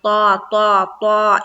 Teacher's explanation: تا کو پر کر کے پڑھیں گے، یعنی کہ موٹے حروف میں سے ہے تا، منہ بھر کے پڑھنا ہے، تا تا تا، اس طرح سے۔